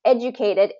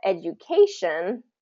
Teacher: educated is first syllable stress education is third syllable stress because of the the the suffix of shun okay education things